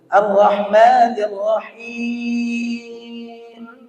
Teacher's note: Dan tidak boleh ketika membaca him itu sengau langsung.